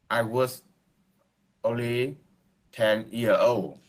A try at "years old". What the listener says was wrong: can you pronounce the S? Can you say years old? Now, I can always hear that there is you're having hard time with pronunciation the S, especially in the end part.